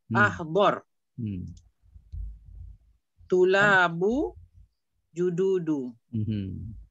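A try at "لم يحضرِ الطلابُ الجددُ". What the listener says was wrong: Tapi sebab ada dua sukun. Jadi ahdari lah ya. Ahdari at-tulabu. al-jududu. Patutnya sukun tapi sebab dia dua sukun bertemu dia tak boleh. Jadi roh akan jadi hidup kan ya. Jadi lam ahdari ya.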